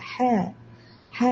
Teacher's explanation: ഹിനെ തൊണ്ടയുടെ മധ്യത്തിൽ നിന്ന് ഉച്ചരിക്കുക